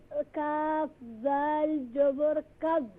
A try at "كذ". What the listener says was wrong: ذال is recite properly. کاف ذال زبر کذ.